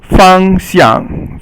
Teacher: So the first one is first tone, fang, and then xiang is actually qing sheng or silent tone.